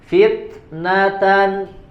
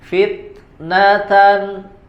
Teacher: Tetap ada angin yang keluar ya, ada angin atau udara yang keluar hamasnya.